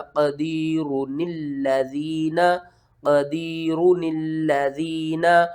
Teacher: اس نون کو اس لام کے ساتھ ملانا ہے